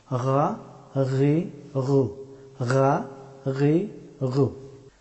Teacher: গাইন হরফটি উচ্চারিত হয় গলার উপরের অংশ থেকে, এই অংশ থেকে গাইন হরফটি উচ্চারিত হয়।